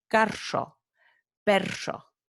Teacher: So it's like a vibrante múltiple kind of with a whistly sound worked in there.